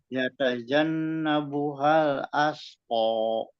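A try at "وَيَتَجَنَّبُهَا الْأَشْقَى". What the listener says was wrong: Ya, betul.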